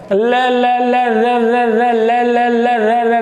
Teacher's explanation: तो ल और रे, ल ल ल र र ल ल ल र। आप देखोगे कि जो जिह्वा है वह केवल और केवल वर्ष भाग के ही जो है मतलब बार बार टच कर रही है।